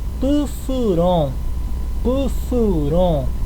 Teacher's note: próxima puur puur significa salvar aí o termina com vogal nasal se termina com vogal nasal a gente já sabe que a última sílaba que é mais forte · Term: oxítona